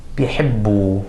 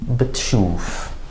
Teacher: a prefix of the letter 'baa,' which usually doesn't really have quite a vowel attached to it, it's more of a schwa.